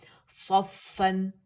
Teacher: सफ सा मोटा पढ़ेंगे, इसको सीन नहीं पढ़ेंगे।